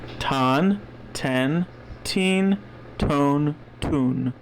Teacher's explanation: It's really big puff of air T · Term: aspirated T